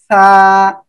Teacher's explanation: জিব্বার আগা সামনের উপরে এই দুই দাঁতের আগার সঙ্গে লাগিয়ে উচ্চারণ হবে